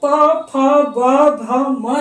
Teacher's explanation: अंत में प फ ब भ म जो है, प फ ब भ म का पहला अक्षर प है, इसलिए इसको पवर्ग के अंतर्गत रखा गया है। और चूंकि प वर्ग के उच्चारण में हमारे दोनों ओठ आपस में स्पर्श करते हैं, आपस में सटते हैं, इसलिए इसे हम ओष्ठ वर्ण कहते हैं।